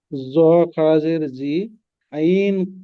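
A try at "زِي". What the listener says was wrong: টান দিয়ে বলেন। জ খারাজের জি, ইয়া মাদ্দার সমতুল্য, তো ইয়া মাদ্দার মতো টান দিতে হবে। খারাজের জি, টান দিতে হবে।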